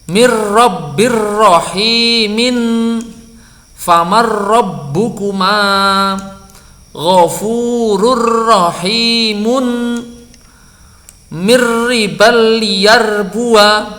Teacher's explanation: Nah, membacanya begini ya, nun atau tanwin deret bertemu ro sama dengan ro tasydid. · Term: idgham kamil